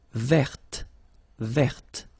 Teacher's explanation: this final E only gives you the possibility to pronounce this t